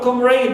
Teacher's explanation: We stress the first syllable, right, but not the suffix raid.